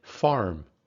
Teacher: in american english that sound is retroflex meaning that your tongue is curled back in your mouth · in british english that r is only used if it occurs in front of a vowel pre-vocally whereas in american english it's also used after a vowel post vocally